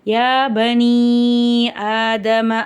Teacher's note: யா மேல சின்ன மத் இருக்கு மூணுல இருந்து நாலு அலிப் வரைக்கும் நீட்டி ஓதணும்